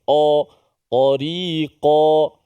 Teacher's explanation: suara itu diangkat dan suara kita tu menghala ke lelangit lelangit atas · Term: suara tebal